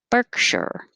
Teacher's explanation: berkshire two syllables stress on the first one